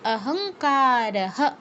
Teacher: তারপর কাতে দীর্ঘ কারহ, বিসর্গের জায়গায়, বিসর্গের পরে যেহেতু কিছু নেই তাই বিসর্গের জায়গায় পূর্ণ হ